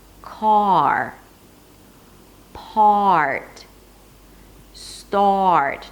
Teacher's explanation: Notice it has two parts, the vowel and then the R. And also notice that the vowel at the beginning is very clean and clear.